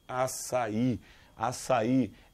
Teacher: eu tenho a vogal a não é e a vogal I estão em sílabas separadas o i está forte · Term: iato